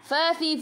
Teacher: Fa fi fu gigi atas menyentuh perut bibir bawah